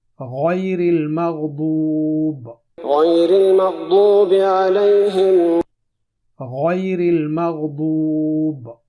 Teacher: لیکن عام طور پر غین کے ساتھ غیر تلفظ کرنے کے بجائے گاف کے ساتھ غیر تلفظ کرتے ہیں. اس لیے قرآن مجید تلاوت کرتے وقت ہمیں غیر تلفظ کرنا ہے، نہ کہ غیر.